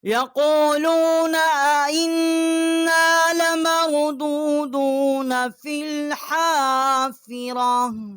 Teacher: حمزہ کو ہم نے نون کے ساتھ مشدد کیا ہے اور یہاں ہم نے غنہ کیا ہے